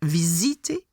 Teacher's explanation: You've got uh the Z sound when you have only one S together and surrounded by vowels